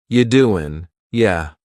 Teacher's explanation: Instead, you're going to hear, you doing, yeah. The word you is reduced to ya.